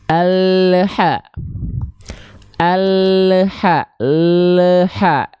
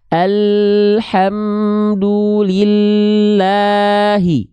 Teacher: makhraj lamnya keburu lepas, terlalu lepas duluan sehingga ketika lepas makhraj huruf lamnya ada bunyi le ketika turun. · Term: memantul